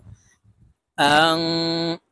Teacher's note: ওয়ালা, হামজা নুন জবর আং, নুন সাকিনের পরে ইকফার হরফ তা আসছে, তাই এই নুনকে নাকের ভিতরে লুকাইয়া গুন্নার সহিত পড়ব